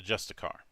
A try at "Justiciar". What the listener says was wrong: Justiciar. Yeah, there's an extra I there, so.